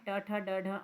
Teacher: ट मूर्धन्य है ट ठ ड ढ